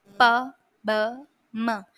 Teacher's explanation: M if you try to produce this sound p b m your lips they touch each other and the sound is produced